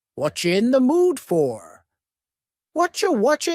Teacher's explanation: the word you has been reduced to Cha